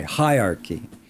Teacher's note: So we have the syllable stress on high.